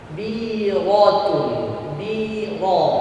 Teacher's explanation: Wa innaha lakabiratun fathah kasrah baris bawah dibantu dengan ya yang sukun 2 harokat mad asli. Ra berharokat fathah baris atas dibaca dengan tebal. Biratun biro ra sifatnya huruf ra izlah sekali atau 2 getaran saja, nggak seperti anak yang baru mampu mengucapkan huruf R getaran banyak lebih dari 2.